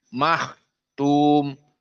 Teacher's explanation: Dan kha dalam keadaan tafkhim